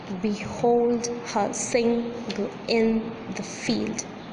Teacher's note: field here B is unstressed hold is stressed her is unstressed sing is stressed G is unstressed in is stressed the is unstressed and field